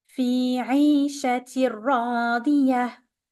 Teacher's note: Here we have, for those who are familiar, we have an idgham بغير غنة. We're gonna merge the tanween into the ra.